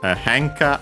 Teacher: accent on the first mora